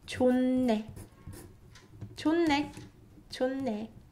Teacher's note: hiet is replaced by niun sound, and it does not remove the next consonant sound. So niun sound is preserved here, and only h changes into niun sound.